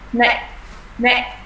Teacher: Rồi âm gió bật ra ấy, là âm cuối là âm ca.